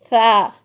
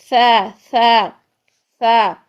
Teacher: जुबान के ऊपर सामने वाले दो जो दांत है ना सामने बिल्कुल, इनके किनारों से लगाएं. फा, बिल्कुल बारीक कर दे, इसमें सीटी नहीं आनी चाहिए, क्योंकि अगर सीटी आई ना तो ये सीन बन जाएगा.